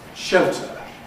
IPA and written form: ˈʃeltə (shelter)